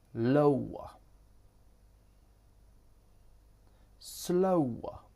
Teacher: Oa. This starts with the o diphthong and ends in the schwa.